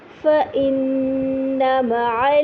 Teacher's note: فإن میں آپ دیکھیے نون پہ اکمل غنہ ہو رہا ہے